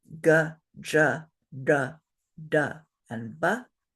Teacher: Those are unaspirated, so they're just straight consonant sounds, no breath.